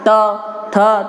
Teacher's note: तो जीभ कहाँ टकराती है? तो दांतों में टकराती है। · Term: त वर्ग